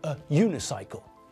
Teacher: If we're talking about a bicycle with only one wheel, then we're talking about a unicycle, not an unicycle, because the word sounds like it starts with a y sound, which means that it sounds like it starts with a consonant, either J or Y.